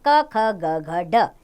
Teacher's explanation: क वर्ग इसमें व्यंजन आते हैं क ख ग घ ड इनका उच्चारण स्थान है कंठ यानी कि इसका उच्चारण कंठ से होता है